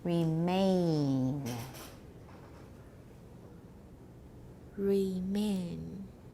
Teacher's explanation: it starts out with a and goes to e